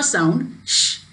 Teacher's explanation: And as I gave you example of sir sound and also sh sound, sh, there is no vibration of vocal cords. So that is these sounds are called as voiceless sound.